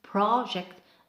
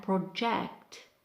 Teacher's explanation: It's project and project. So the first syllable for nouns is longer, and for verbs is the second syllable, which is longer and louder.